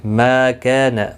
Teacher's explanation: ما کا دونوں الف مدہ ہے، ایک ایک الف کی مقدار کے برابر کھینچ کر پڑھیں گے